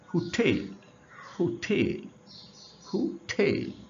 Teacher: হু আস্তে, ঠেল জোরে, তাহলে দাঁড়ালো কি টেল শব্দটিতে জোর দেয়া হয়েছে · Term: স্ট্রেস সেকেন্ড সিলেবল